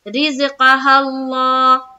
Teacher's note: کھڑا زبر کو ایک الف کی مقدار کے باقدر کھینچ کر پڑھیں گے